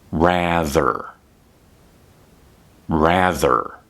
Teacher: The word rather has a voiced TH sound.